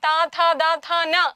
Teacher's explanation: പല്ലിന്റെ ഭാഗത്താണ് നാവ് പോയിട്ടൊരു തടസ്സം സൃഷ്ടിക്കുന്നത് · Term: ദന്ത്യം